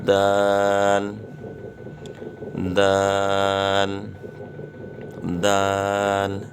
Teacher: زبان کی نوک جب اوپر کے اگلے دونوں دانتوں کی جڑ کی طرف والے آدھے حصے سے لگے تو یہ حرف پڑھا جائے گا